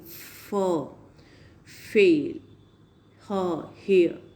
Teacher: They are coming closely to each other. No closure is there. Only some narrowing is there. Air is passing with the audible friction. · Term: Fricatives